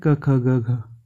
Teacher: कंठ से क वर्ग निकलता है